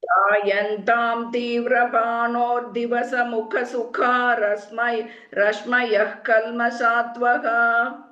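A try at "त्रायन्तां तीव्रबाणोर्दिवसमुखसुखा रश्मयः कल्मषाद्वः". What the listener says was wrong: correct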